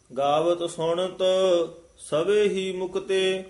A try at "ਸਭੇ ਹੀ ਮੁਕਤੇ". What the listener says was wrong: ਸਭੇ ਹੀ ਮੁਕਤੇ, ਸਭੇ ਪਦ ਥੋੜਾ ਜਿਹਾ ਕੱਸ ਕੇ ਉਚਾਰਨ ਕਰਨਾ।